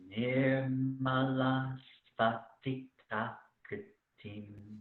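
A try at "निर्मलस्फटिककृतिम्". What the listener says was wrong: Yes, and just let the ka be longer. Nirmalaspatika kritim. I want you to exaggerate the length of ka.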